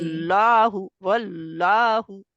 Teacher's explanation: ला अल्लाह का नाम मोटा पड़ा जाएगा, लाम जो है